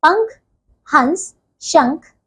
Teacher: अनुस्वार का उच्चारण नाक से होता है